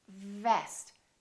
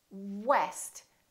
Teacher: So for example, when you say vest, make sure that it doesn't sound like west. So V is just the lower lip touching the upper teeth, vest. And W, west, we round our lips and the lower lip doesn't touch anywhere.